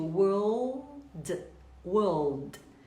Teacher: Então, o inglês britânico tem uma vantagem em relação ao americano, porque o R do britânico não é tão enfatizado. Então, eu digo world, world. Para o britânico, basta alongar o O